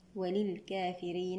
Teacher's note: الراء هنا مرققة لأنها مكسورة